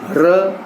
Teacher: जिह्वा ऊपर जाती है और झटके से नीचे आती है, इसलिए उसे कहते हैं लुंठित ध्वनियां